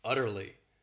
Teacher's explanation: This word has 3 syllables, and the stress is on that 1st syllable